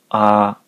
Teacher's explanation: あは口を大きく開けて、あーと伸ばします